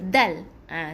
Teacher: ada tekan sikit kena hujung lidah ni, tekan ke bahagian gigi atas pangkal gigi atas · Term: huruf dal